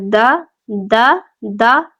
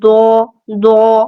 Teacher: اگر ہم اس پہ زبر لگا کے دیکھیں تو دیکھتے ہیں دال زبر دا دا دا، دال جو ہے وہ باریک پڑھیں گے، دود کو ہم پورا اور موٹا پڑھیں گے، دود زبر دو پر پڑھے ہیں نا، دا اور دو فرق رکھنا ہے اس میں۔